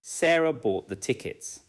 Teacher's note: The answer may be Sarah bought the tickets. Now tickets receives the strongest stress. · Sarah is stressed because it answers the question. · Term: Sentence stress, sentence stress